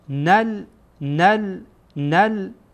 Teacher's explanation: این نون در اینجا با لام وصل میکنین. جعلنا نل نل نل قب قب قبله قبلت قبلت جعلنا القبلة.